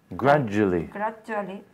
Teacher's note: You see a D, but you say j.